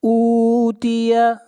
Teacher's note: حمزہ کو کھینچ کر پڑھیں گے 1 الف کے برابر